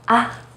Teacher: try to say it as in the first tone except that you say it in a more light and short way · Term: neutral tone